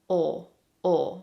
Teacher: But the sound is a little bit further back in your throat and you say O. So it's very similar in my mind, at least, to the Spanish O, but it's made further back in your throat. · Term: dark L